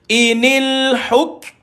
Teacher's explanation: Maka matikan kaf sukun, tuan-tuan kena matikan K dia dulu, baru angin keluar. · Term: hamas